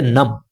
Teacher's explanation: اقلاب ہو رہا ہے. نون کی آواز میم میں تبدیل ہو جائے گی